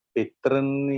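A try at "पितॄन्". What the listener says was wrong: This is Pitrin. Dirkha is there.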